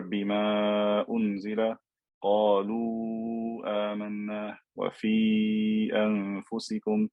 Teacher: I'm stretching these letters of med because of the hamza in the next word. If I stopped on the word, I wouldn't stretch. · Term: med jaiz